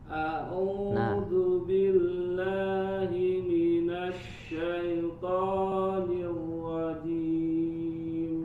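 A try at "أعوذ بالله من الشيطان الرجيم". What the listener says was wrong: Tebalkan lagi huruf to-nya. Minasyaitonir rajim.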